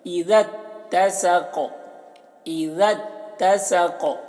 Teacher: ذال تا کے ساتھ مل رہا ہے اور یہ دونوں الف کو نہیں پڑھا جا رہا